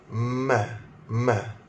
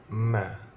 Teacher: Bibir atas bercantum dengan bibir bawah. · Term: huruf mim